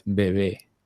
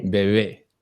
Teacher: I always try and imagine it as like, it's like a V, but with both your lips closed. That's exactly the way it is. No teeth, only lips. Yeah. Whenever you're doing it, so notice when you do the V, your teeth are touching your lower lip.